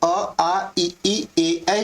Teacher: जब अ आप बोल रहे हो तो आपका जो होठ है वो गोल नहीं हो रहा है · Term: आवृत मुखी